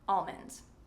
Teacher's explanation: Some people say that pronouncing the L is not correct, but this is a contentious debate. And I would say that pronouncing the L is okay. Almond.